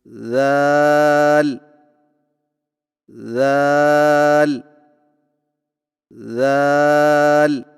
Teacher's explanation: ذال کی ادائیگی میں زبان کی نوک کو سامنے والے اوپر کے 2 دانتوں کے اندرونی کناروں سے نرمی سے لگا کر باریک آواز میں پڑھیں